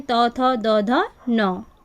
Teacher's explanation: दंत त वर्ग के अंदर हमारे व्यंजन आते हैं त, थ, द, ध, न। यानी कि त वर्ग का उच्चारण स्थान हमारा दंत कहलाता है।